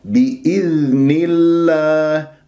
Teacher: والذال ساكنة، والذال إذا ما أجريت فيها الصوت هي رخاء، وراح تقلقلها بإذني، بإذني، وهذا خطأ.